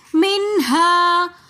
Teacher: منہا کے ساتھ الف مدہ ہونے کی وجہ سے ہم یہاں پر ایک الف کی مقدار کھینچ کر پڑھیں گے